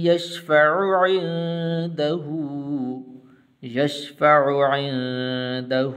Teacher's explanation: عین، پھر اس کے بعد پھر عین آ رہا ہے، تو آپ نے دونوں جگہ پر عین نکالنا ہے